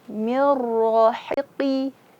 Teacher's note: Hi ini huruf istifal dan infitah. Jadi hi. Efek dari infitah dan istifal itu senyum.